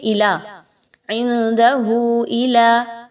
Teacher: الا، الف مدہ، اب یہاں پہ لوگ کیا غلطی کرتے ہیں کہ الا، عندہ الا، الا نہیں ہے الا ہے، ٹھیک ہے، حمزہ اور لام کو آپس میں مضبوطی کے ساتھ آپ نے ملانا ہے، لام مشدد ہونے کی وجہ سے